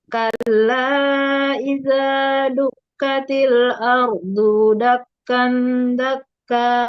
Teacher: Yang pertama, dakkan, dakka. Ada dengungnya.